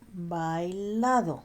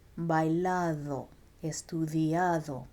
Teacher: The D here is not pronounced like a hard English bouncy duh. It's more like the TH in then or there. So put your tongue in between your teeth and say then and there, and then try bailado, estudiado.